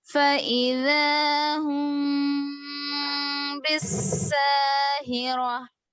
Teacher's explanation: इख्फा शफवी है ना मीम को छुपाएंगे